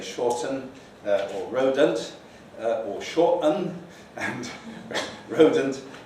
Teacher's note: very frequently one finds that with younger speakers, they just put in a schwa